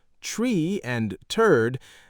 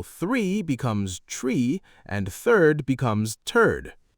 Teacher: the Irish accent often pronounces TH as a D or T sound. So 3 becomes tree and third becomes turd.